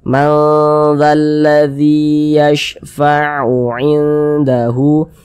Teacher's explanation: Akan tetapi karena dia akrob maka kadar samarnya, kadar ikhfanya itu dia tinggi, sehingga lebih condong berbunyi n, tapi dia disamarkan. Lebih condong berbunyi n, tapi dia samar. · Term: ikhfa hakiki akrob